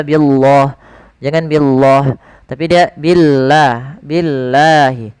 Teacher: Dan lafal Allah kita panjangkan sepanjang 2 harakat